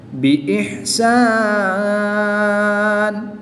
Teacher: وقف کی حالت میں دو زیر کی تنوین کو ساکن کر دیں گے، اور یہاں پر وقف کی حالت میں مد عارض ہوگی، 2 سے 3 الف تک کھینچ کر پڑھیں گے